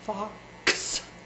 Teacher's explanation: That last sound, ks, is really a quick blending of two sounds, k and s, ks, ks. But it's so fast.